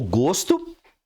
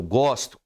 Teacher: o gosto, sabor, fechado, eu gosto, aberto.